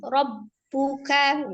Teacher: kafnya itu dia siddah, hanya saja memiliki sifat al-hams, mengalirnya nafas. Tidak sama ya mengalirnya suara dengan mengalirnya nafas.